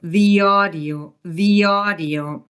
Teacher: the ends in an e sound and we insert the y sound to connect the e to the audio